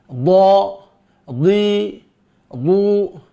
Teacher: bagian yang ditekan adalah sisi lidah bagian belakang mengenai dinding gigi geram atas. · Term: huruf dhad